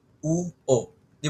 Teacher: Dalawa lang silang rounded which is U o.